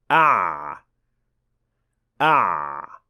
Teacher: the sound of Ein is a semi-continuous sound which means that it can be extended or made longer · the sound is not generated by pushing air out, but by vibrating your vocal cords. · The sound of ayn is a semi-continuous sound, which means that it can be extended or made longer. And while that is not the point when reciting the Quran, it is an indication that you're pronouncing the ayn correctly.